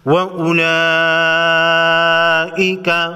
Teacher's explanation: بڑی مد کو 5 الف کے مقدار کھینچ کر پڑھیں گے۔ وَأُولَئِكَ أَصْحَابُ النَّارِ، نون مشدد پر غنہ ہوگا۔